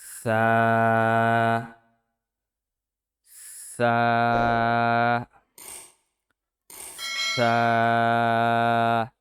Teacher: সা উচ্চারিত হয় জিহ্বার আগা সামনের উপরের দুই দাঁতের আগার সঙ্গে লাগাইয়া।